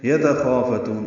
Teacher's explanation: یتخافتون، یا تا جلدی پڑھیں گے، خا پر پڑھیں گے، الف مدہ ہے، فا کو جلدی پڑھیں گے، تون میں تا کو لمبا کریں گے، وقفاً مد عارض للسکون ہے